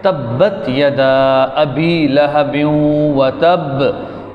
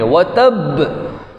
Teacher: इस आयत के आखिर में देखें बा है, बा हुरूफ़ क़लक़ला में से है, इस पर क़लक़ला भी करेंगे और चूँकि इस पर तशदीद है इस वजह से इसको थोड़ी सख्ती से भी पढ़ेंगे।